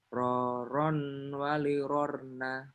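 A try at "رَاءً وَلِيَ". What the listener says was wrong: Rorong walirorna. Kalau ini itu digunnah, tangan ketemu waw ya. Rorong walirorna. Jadi dialirkan ke hidung ya. Karena dia idgham bigunnah. Rorong walirorna. Kalau roron walirorna itu jadi izhar. Nah, itu jadi jelas tanwinnya ya. Ini tanwinnya jadi gunnah ketika ketemu waw. Rorong walirorna. Rorong walirorna. Rorong walirorna. Kayak rorau. Rorau. Tanwin ketemu waw. Tanwin. Kayak ro fathah. Kemudian ketemu waw sukun. Gimana bacanya? Raw kan? Raw.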